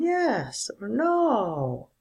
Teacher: student a answers with a falling tone